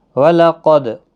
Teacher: قاف حروف مستعلیہ ہے، پور پڑھا جائے گا، دال ساکن پر قلقلہ ہوگا